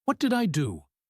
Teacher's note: He stresses the word do.